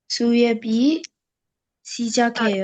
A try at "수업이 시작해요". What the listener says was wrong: Wait. This is su and this is not a. This is o. So su obi. 수업이 시작해요.